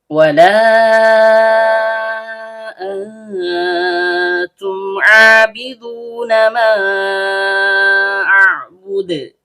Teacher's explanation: Waw huruf bibir, lam ujung lidah bertemu dengan langit bagian depan. Karena lamnya berharokat fathah diikuti alif layyinah, maka seharusnya terjadi mad tabi'i.